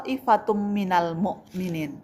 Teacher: to-nya mad tabi'i bertemu dengan hamzah dalam satu kata. Maka dibaca panjang 5 sampai 6 harokat. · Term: mad wajib muttasil